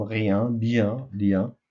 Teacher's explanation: les lèvres sont écartées et la langue est en avant